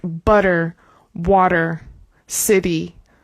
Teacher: When we have a T in between two vowels, we use the flap T, especially in my accent in US English.